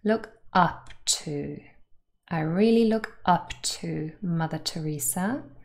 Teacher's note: this phrasal verb has two particle and the first one is stressed